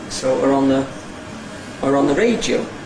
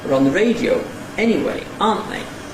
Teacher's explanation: the weak form [ər] before [ɒ], and then ‘on’ [ɒn] which never has a weak form, and the weak form ‘the’ [ðə] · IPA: ər ɒn ðə ˋreɪdjəʊ ∣ ˋeniweɪ ∣ ˋɑːnt ðeɪ